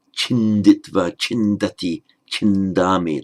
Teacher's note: it's one of those verbs that inserts a nasal before the final consonant. So chid, chinditva, chindati, chindami, the N gets in.